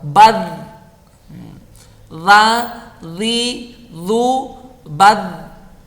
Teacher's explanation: Makhrajnya huruf dhal itu adalah di ujung lidah dan ujung 2 gigi seri pertama atas.